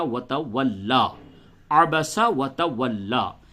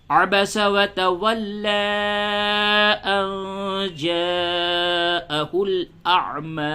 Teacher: اگر آپ وقف کرتے ہیں تو مد نہیں ہوگا، اور اگر وصل کرتے ہیں یعنی ملا کر کے پڑھتے ہیں تو یہاں پہ مد ہوگا